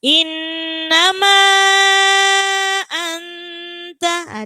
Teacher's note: Inna di situ ada nun bertasydid maka bacaan gunna. Fadzakir inna jadi harus dibaca mendengung.